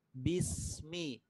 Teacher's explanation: Suara sin dan desisnya itu nyambung dengan huruf mim.